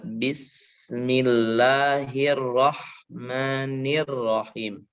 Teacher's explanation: Sedangkan mim adalah sifatnya sifat gunnah. Dia mengalirnya nafas dari pangkal hidung. Artinya dia harus betul-betul mengkatupnya secara benar.